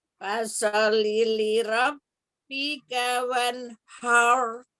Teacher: lam tasdidnya cukup tekan aja ya, jangan ditahan lama-lama ya